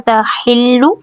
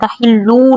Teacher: لام کو یہاں پر جو لام کی پیش اس کو زیادہ لمبا نہیں کر دیں ، تحلو نہیں ہو جانا چاہیے، لہو یہاں پر مد صلہ